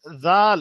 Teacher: জিবের আগা এবং উপরের দাঁতের আগার সঙ্গে ঠেকবে